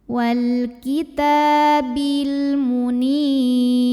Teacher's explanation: maka lam sukun ini dibaca dengan jelas atau disebut dengan izhar qamari.